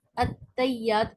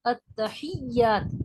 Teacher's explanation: الغرض یہ جو تشہد ہے اس کے اندر زیادہ تر جو غلطی ہے عوام کی وہ یہ ہے کہ پہلا لفظ التحیات کو لوگ التیات پڑھتے ہیں، یعنی ہا کے ہا کو مسنگ کر دیتے ہیں اور ہا نہیں پڑھتے ہیں